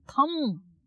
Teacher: तम नहीं, थम महाप्राण